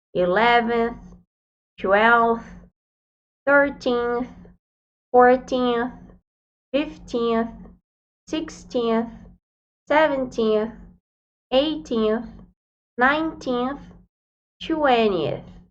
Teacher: no final da palavra, a gente coloca a ponta da língua no dente para pronunciar corretamente